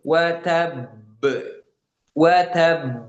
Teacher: Ya, baknya agak ditahan ya karena dia bertasydid. Itu kita namakan qalqalah kubro. Ketika waqaf kemudian berhenti di huruf qalqalah yang bertasydid.